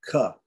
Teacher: It's a hard aspirated guttural, right? Or an unvoiced aspirated guttural, hard aspirated guttural, right?